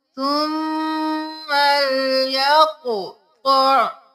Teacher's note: कॉफ मोटा क़ मोटा, कॉफ पे कलकला करेंगे